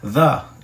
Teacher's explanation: Mas quando o th ele começa e esse th é o th e que na verdade é um artigo, você fala diferente, fala um pouquinho mais forte. The é quase um d com z.